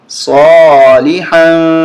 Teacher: یہاں اخفا ہوگا، ناک میں آواز چھپائیں گے